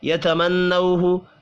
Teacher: نون مشدد پر بھی غنہ کریں گے